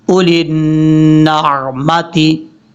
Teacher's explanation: عین کو حمزہ کی آواز نہیں آنی چاہیے